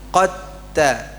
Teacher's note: Jadi qo qo di sini langsung ke ta qatta ya. Dalnya dimasukkan pada huruf t-nya karena dia sejenis atau sama makhrajnya. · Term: idgham mutaja nisain